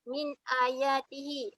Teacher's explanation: Hukumnya adalah izhar, cara bacaannya adalah tidak berdengung.